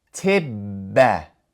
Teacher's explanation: it would be pronounced tibba, emphasizing that double B sound because that's what the shaddah represents